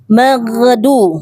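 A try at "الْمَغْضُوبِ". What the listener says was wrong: Maghdu. PR ghain nanti diperbaiki. Ya, jangan mantul.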